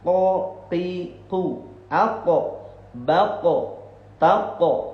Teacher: ketika kita ngucapin huruf qaf ketika baca Al-Qur'an keluarnya itu dari pangkal lidah bagian atas